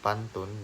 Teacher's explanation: bunyi P pada silabel pertama kata pantun dilafalkan secara apikoalveolar